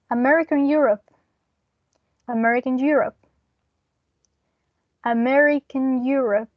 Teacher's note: if we add an intrusive R after America we have American Europe